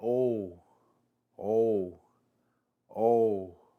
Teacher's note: our last vowel double o indicates a long vowel sound that sounds very similar to the vowel of the English words mole or goal